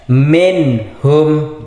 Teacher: Izhar halqi nun mati ketemu ha. Jadi harus dibaca jelas minhum. Jadi nun matinya harus dibaca jelas.